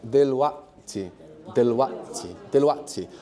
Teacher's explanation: another new consonant in Arabic, which is just like a little piece of silence, right? It's a glottal stop.